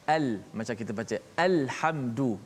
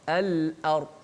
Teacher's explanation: lam hujung lidah, hamzah di mana di pangkal halqum, ha di tengah halqum, kha di hujung halqum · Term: lam qamariyah